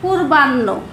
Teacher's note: নর উচ্চারণটা আগে আসছে, হটা পরে হচ্ছে